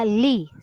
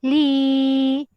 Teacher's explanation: Berlaku hukum mad asli ya dibaca panjang 2 harokat. Li 2 kali kiraan ataupun 2 kali ketukan.